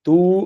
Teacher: தூ அப்படின்ற நெடில் எழுத்து இரண்டு மாத்திரை அளவு ஒலிக்கும் பொதுவாக